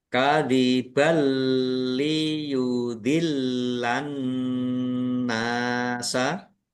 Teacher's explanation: Fathah tanwin bertemu dengan huruf lam idgham bila ghunah masuk dengan tidak mendengung ya langsung langsung masuk ke huruf lam ditandai lamnya ada tasdidnya tetapi tidak mendengung kemudian liyudillan lamnya ada tasdidnya dibaca dobel ditekan dan ditahan biar tampak dobelnya annasa alif lam syamsiyah karena tidak dibaca langsung masuk ke huruf berikutnya yaitu itu nun ditandai nunnya ada tasdidnya.